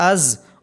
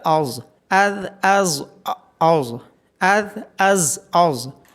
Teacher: ذال کو نرمی کے ساتھ ادا کریں گے بالکل اسی طرح جس طرح ہم نے ثا کو پڑھا، اذ۔ زا کو سختی کے ساتھ از اور ظا کو موٹا کر کے پڑھا جائے گا